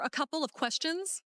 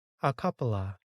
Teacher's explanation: Instead of saying of, we just say uh because it's quicker.